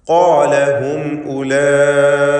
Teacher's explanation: ഖാല എന്ന പദത്തിലെ ഖാഫും അതിൻ്റെ ദീർഘാക്ഷരമായ അലിഫും ഇവ രണ്ടും സ്വരഭാരത്തോടെ ഉച്ചരിക്കേണ്ടവയാണ്, തഫ്ഖീം ചെയ്യേണ്ടവയാണ്. ഖാഫ് ഇസ്തിഅലാഇൻ്റെ ഹർഫാണ്.